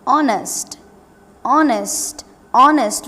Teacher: We are not pronouncing the H here.